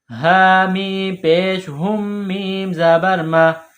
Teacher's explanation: یہ چشمے والی گول ہا ہے منہ سے ہوا نکالنے کی طرح اس کو پڑھیں گے ہا کے اوپر پیش ہے اس کے بعد میم ہے میم